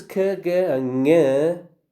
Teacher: k and ng, which are velar stops